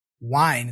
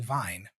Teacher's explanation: in German, they tend to pronounce W as a V